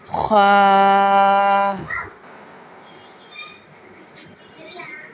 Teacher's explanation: حلق کے اوپر والے حصے سے خا ادا ہوگا